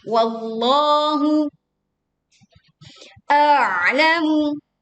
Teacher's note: Hati-hati di sini, baca dulu hamzahnya baru menekan di ain. Jadi bukan huruf ain dua-duanya.